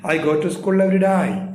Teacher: ഈ every day എന്ന് പറഞ്ഞപ്പോൾ ഞാൻ എന്ത് ചെയ്തു ശബ്ദം താഴ്ത്തി ഇതിനെ നമ്മൾ ഫോളിങ് ഇന്റർനേഷൻ എന്നൊക്കെ പറയാറുണ്ട്